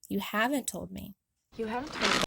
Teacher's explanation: stressing haven't is an example of how we typically stress negatives while speaking.